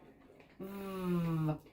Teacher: off t uh our voice is on for this vowel V we're biting our lip and our voice is on